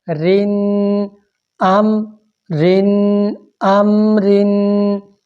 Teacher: زیر والی را کو، دو زیریں والی را کو باریک کر کے پڑھنا ہے